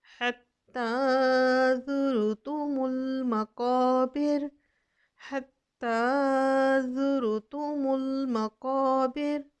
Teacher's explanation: मीम को लाम के साथ मिलाएंगे, कौफ मोटा पढ़ेंगे, इसके साथ अलिफ मद्द आ रही है, अलिफ से पहले ज़बर आ रही है, एक अलिफ के बराबर खींचते हुए आयत को हम कंप्लीट करेंगे।